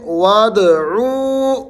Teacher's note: واو مد آ رہی ہے، عو کو آپ نے کھینچنا ہے